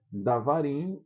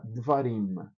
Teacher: o camates vai virar um chvá de davar, que seria davarim, vai ficar devarim.